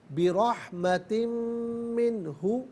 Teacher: دو زیر کی تنوین ہے اسے منہ کے میم کے ساتھ ملا کر تنوین کی آواز نہیں آئے گی بلکہ میم کی آواز کو غنے کے ساتھ ادا کریں گے۔ رحمت میں را پر زبر ہے، را کو پر کر کے پڑھیں گے۔